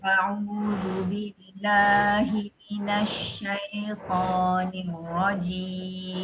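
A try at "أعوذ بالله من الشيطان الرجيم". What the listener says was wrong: Okey, pada shin tu nampak nak moncong-moncong ya. Minasyaitan. Tak ada. Pegang. Minasyaitan. Jangan, tak boleh pun. Minasyaitan. Dalam tu. Kalau muncung nanti dia dah akan jadi ismam pula. Ismam kan.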